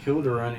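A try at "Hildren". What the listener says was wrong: You keep adding vows to people's names.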